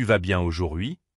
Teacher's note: avec une intonation montante à la fin comme une vague